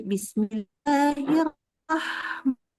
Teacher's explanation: Kalau baca Ar-Rahman, Bismillahirrahman sampai dari ha-nya dari roh sampai ke ma disebut membaca ma, maka ha itu tetap kedengeran suaranya, keluar udaranya